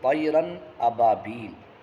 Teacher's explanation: طیرن تنوین کی وجہ سے، چونکہ را پر تنوین ہے، 2 زبر کی تنوین ہے، اور تنوین کی وجہ سے آواز ناک میں جائے گی ضرور، ناک میں آواز جا کر کے فوراً آگے حمزہ کی ادائیگی ہو جائے گی، یعنی آواز ناک میں ٹھہرے گی نہیں۔ · اظہار ہونے کا مطلب یہ ہے کہ وہاں پر نون کی ادائیگی کے لیے یا تنوین کی ادائیگی کے لیے ناک میں آواز جائے گی تو ضرور، البتہ وہاں پر آواز ٹھہرے گی نہیں، بلکہ آواز کو نون کے مخرج میں لے جا کر کے اور بغیر ٹھہرے فوراً آگے ادا کر دینا ہے